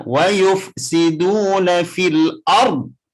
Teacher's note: jangan sampai kita wakaf tapi suara do-nya hilang.